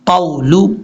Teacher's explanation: قاف کو واو سے جب ملانا ہے تو واو کو شارٹ کٹ پڑھنا ہے، لمبا نہیں کرنا